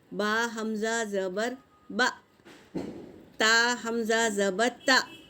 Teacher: اس طرح حمزہ ساکنہ کو جھٹکے کے ساتھ پڑھیں گے